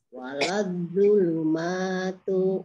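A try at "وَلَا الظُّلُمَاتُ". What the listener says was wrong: waladz. Zoknya double waladz.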